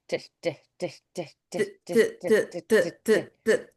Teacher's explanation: It's a dentalized sound.